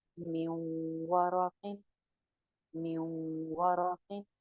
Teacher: वाव है, यहाँ पे नाक़िस इदगाम है और गुन्ना के साथ है